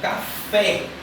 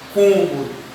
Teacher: Deixar a vogal com som fechado. Enquanto o agudo vai abrir, o circunflexo vai deixar o som bem fechadinho. Quando temos a palavra cômodo, perceba que o O, como está com acento agudo, vai ter um som mais fechado.